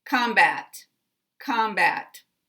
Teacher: it has the primary syllable on the first syllable and the second syllable is secondary so both of these contain a full vowel there's no schwa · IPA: ə